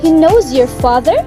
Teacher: The question mark indicates strongly rising intonation. This is common for yes and no questions.